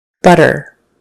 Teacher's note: This next one has a middle T, where it's just kind of a soft, somewhere in between T and D sound.